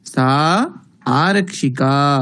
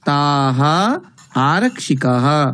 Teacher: एकवचने अत्र विसर्गः नास्ति किन्तु बहुवचने विसर्गः अस्ति अतः उच्चारणमपि तथैव भवति